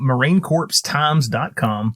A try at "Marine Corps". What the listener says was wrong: Core, by the way, not corpse. You did.